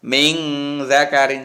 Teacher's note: Ini samar-samar antara idhar sama idgham. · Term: ikhfa